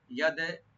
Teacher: দাল একলা কলকলা করব, মানে ছোট কলকলা হালকা